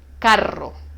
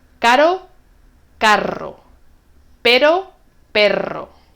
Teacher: con el sonido fuerte rebota toca varias veces